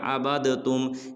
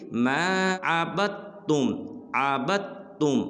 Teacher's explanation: اب یہ جو عبدتم ہے نا، اس میں دیکھیں درمیان میں دال بھی کھڑا ہے، بعض لوگ پڑھ دیتے ہیں عبدتم، یہ بالکل غلط ہے، اس کو پڑھیں گے ما عبدتم، عبدتم، با کو تا کے ساتھ ملائیں گے